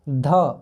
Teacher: अरे ये तो दांत में जीभ टच कर रहा है, ये तो दंत से बोला जाएगा